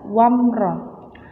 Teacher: Idhar syafawi adalah apabila mim sukun bertemu dengan semua huruf selain mim dan ba, maka wajib dibaca jelas wamro. Jangan sampai dibaca mendengung atau dibaca samar-samar wamro, itu salah. Idhar syafawi harus dibaca jelas wamro.